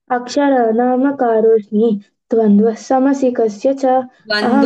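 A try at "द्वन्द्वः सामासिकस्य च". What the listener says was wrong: ద్వంద్వస్సామాసికస్య చ, అక్కడ కూడా మళ్ళీ దీర్ఘమే, ద్వంద్వస్సామాసికస్య చ.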